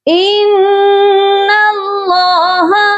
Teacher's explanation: نون مشدد ہے، اس پر ہم غنہ کریں گے، اللہ کے لام کو موٹا کر کے پڑھا جائے گا۔